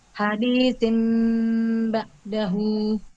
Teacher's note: bunyi huruf nun sukun atau tanwin diganti dengan huruf mim sukun saat bertemu dengan huruf ba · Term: iklab